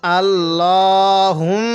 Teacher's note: এই মিমের মধ্যে গুন্না করবো